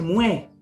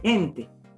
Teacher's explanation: En vez de decir gente, gente. Es decir, hay una aspiración de esta J.